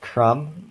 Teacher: We don't really say the B in crumb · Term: deletion